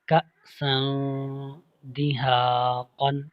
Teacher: تنوین ہے سین کے پاس، اور تنوین کے بعد دال اخفا حرف ہے، اس میں اخفا ہو رہا ہے یعنی غنہ کریں گے